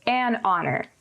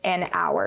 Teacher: it does start with the letter h but instead of making a ha sound it makes a uh sound a vowel sound we would use the word and here and we would say